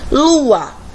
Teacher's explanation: o está com o Tom forte e o a nunca é semivogal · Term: hiato